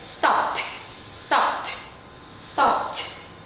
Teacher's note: It's like you're saying the p sound and then the t, but very fast.